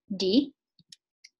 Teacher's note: it sounds exactly like a very, very short T. It almost sounds aspirated, but I just thought that it was still very slightly voiced and with a little bit of aspiration. I just said that this had a positive 0.03 seconds of VOT, and I thought that it could be the result of background noise while recording.